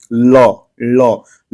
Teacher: जीभ का जो अगला सिरा है वो पूरा जो है आपके तालू को पीछे की तरफ टच कर रहा है या छू रहा है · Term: पार्श्विक ध्वनि